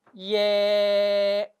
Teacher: 시작은 예였으나 끝은 에입니다. 그래서 이중모음이라고 하는 겁니다.